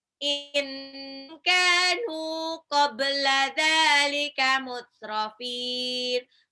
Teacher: Kanu kaf sama nun 2 harokat. Qabla ba-nya pantul qalqalah. Dzalika dzal yang matabi'i mutrafin mad adid disukun.